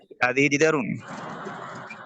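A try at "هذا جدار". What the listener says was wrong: হাজি হবে না, হাদা জিদারুন।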